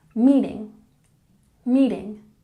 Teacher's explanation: when we pronounce meeting put the emphasis on the first syllable